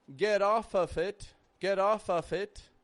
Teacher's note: the letter f is being pronounced as a v we're giving it a little bit of voice we're not making it off get off of it get off